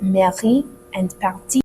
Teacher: The R sounds, as we said before, are moved to the very back of the throat